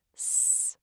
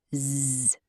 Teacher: Unvoiced S is S. I can't hum on it. Voiced Z is Z. I can hum on it.